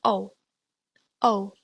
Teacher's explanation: OU is pronounced O, which is a more rounded sound, and the voice stops more towards the back of your mouth.